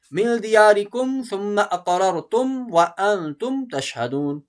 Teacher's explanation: میم ساکن کے بعد سا ہے، یہاں اظہار ہوگا، کوئی غنہ نہیں